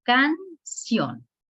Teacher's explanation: La última sílaba se escucha más fuerte, lleva ción. Aquí en la sílaba ción es la que lleva el mayor relieve.